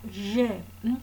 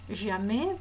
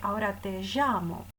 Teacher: Esta consonante se pronunciaba como hoy en francés jamais, por ejemplo, o como Pujol en catalán, o como por ejemplo, como dicen los argentinos cuando dicen ahora te llamo. Es decir, era una consonante fricativa sonora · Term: fricativa prepalatal sonora